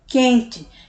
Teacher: A palavra quente é a mesma coisa, QU, sendo que esse U nem é pronunciado, ele se funde, ele se junta com a letra Q e a gente já pula logo para o E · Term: dígrafo